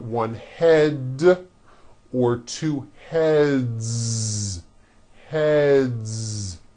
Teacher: the word head ends with a voiced D, d. So we've got one head or two heads.